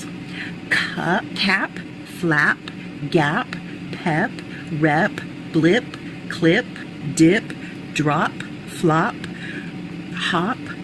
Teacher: the first sounding of the P is stronger than that last one of the unreleased sound of P.